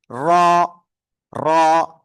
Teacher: জিহ্বার আগার পিঠ তারপর আবার উপরে তালুর সাথে লাগিয়ে আপনার এই অক্ষরটা উচ্চারিত হবে।